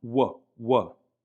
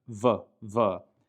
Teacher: The next letter is the letter Vav, which some books will write as Wow. In ancient times, it had a W pronunciation, w, like in water. But in modern Israeli pronunciation, it generally receives a V pronunciation